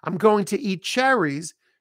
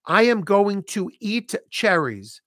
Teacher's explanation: Notice I just dropped the T.